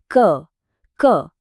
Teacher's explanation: क वर्ग की ध्वनियां जैसे क, ख, ग ये गले के बिल्कुल पीछे से आती हैं